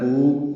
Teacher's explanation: طا پر ہے، لام باریک ہے، قاف پر ہے یعنی موٹا پڑھیں گے. قو واو مدہ ہے، 2 حرکات لمبا کریں گے